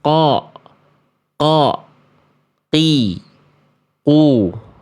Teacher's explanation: Karena huruf qof makhrajnya dari walqofu aqs lisani fauqu tummal kafu asfalu. Jadi huruf qof itu pangkal lidah. Memang makhrajnya dari pangkal lidah tuh.